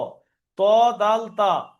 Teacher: জিভের আগা সামনের উপরের দুই দাঁতের গোড়ার সাথে লেগে উচ্চারণ হবে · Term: 11 নম্বর মাখরাজ